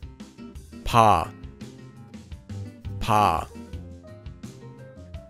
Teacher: It's between P and B, and is a bit softer.